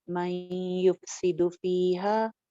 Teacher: फीहा मन युफ्सिदु फीहा, मन युफ्सिदु पे क्या हो रहा है, नून साकिन के बाद या आ रही है यरमलून वाली, लिहाजा यहाँ पे इदगाम हो रहा है। मीम को हम या के साथ ज्वाइन कर रहे हैं, लेकिन थोड़ी सी नून की आवाज बाकी रखते हुए। नाकिस इदगाम कहलाता है या और वाव के ऊपर, यानी नून की थोड़ी सी सिफात बाकी रह जाती हैं।